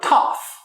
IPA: tɑf